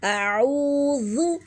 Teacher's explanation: یہ واو مدہ ہے کیونکہ واو ساکن سے پہلے پیش ہے۔ اعوذ، ذال کو ہم نرمی سے پڑھیں گے، زو نہیں پڑھنا، زو نہیں کرنا، پیش کو ضمہ جو ہے اس کو مجہول نہیں کرنا، اس کو جھلانا نہیں ہے۔